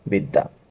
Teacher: দয়ের সাথে যেহেতু জফলা আছে দয় 2 বার উচ্চারণ করতে হবে। উচ্চারণটা হবে বিদ, থেমে যাচ্ছে তাই হসন্ত এবং দয়াকার দা, বিদ্যা। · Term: দ্বিত্ব উচ্চারণ